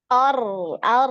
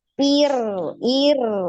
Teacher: Ar, ar, tebal ya. Kemudian dialirkan. Ar, ar, gitu ya. Ir, ir, tipis.